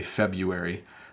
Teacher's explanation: We say the R maybe a tiny, tiny bit, but you don't need to say the R.